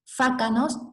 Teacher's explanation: Fácanos, F inicial pasa a H, C inicial, K, o sea, la oclusiva velar sorda, pasa a G, perdón, se sonoriza